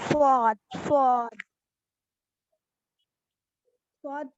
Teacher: स्वाद, साद नहीं, साद तो लाइट वर्ड हो जाएगा